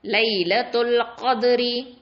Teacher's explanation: இந்த தால் சுக்கூன், அப்போ கல்கலா கொடுக்கணும்.